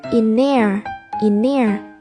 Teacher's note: thì thờ cũng bị nuốt bởi vì N đứng trước thờ.